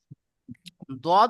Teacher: আচ্ছা, দত দদ উচ্চারিত হয় দেখেন জিহ্বার জিভের কিনারা, এই যে দেখেন জিভের কিনারা, জিভের কিনারা এবং তার বরাবর উপরের মাড়ির দাঁতের গোড়ার সাথে লাগিয়ে উচ্চারিত হয় দদ